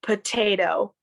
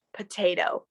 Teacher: The first T is stronger, and the second T isn't as strong. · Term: stronger T